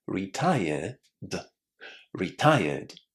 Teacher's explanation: it's because my accent is British and in situations like these, we don't normally say the letter R. However, in international English, it's absolutely fine to pronounce the R, and I would definitely encourage you to do that. · when you add an ed ending in a situation like this, you don't add any extra syllables. That means that we have to say retire and then add the d sound.